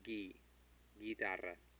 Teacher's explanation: because the U is between a G and I, it's silent.